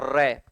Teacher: र में जीभ कंप रही है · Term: प्रकंपित व्यंजन